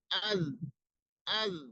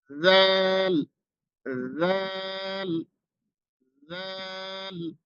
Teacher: জাল উচ্চারণ করব আমরা জিহ্বার আগা এবং সামনের উপরের যে দুটি দাঁত রয়েছে সেই দুটি দাঁতের একবারে আগার সঙ্গে জিহ্বার আগাটা লাগিয়ে দিব। জাল, জাল, জাল।